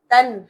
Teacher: میں سے ہے تو ہم نے یہاں پر اظہار کرنا ہے نون کو ظاہر کر کے پڑھنا ہے نہ کہ گنگناہٹ کے ساتھ